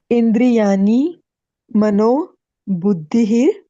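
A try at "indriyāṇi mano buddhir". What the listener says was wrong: you're saying asa because you're trying to pronounce the two together right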